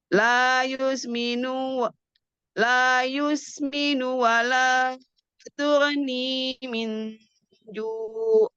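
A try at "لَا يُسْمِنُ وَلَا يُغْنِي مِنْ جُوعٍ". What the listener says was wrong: Yugni bukan tun. La yusminu wa la yughni min ju'. yughni,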